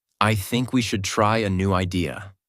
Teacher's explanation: Voice goes down at the end. This is called falling intonation, and it instantly makes you sound more mature, certain, and in control.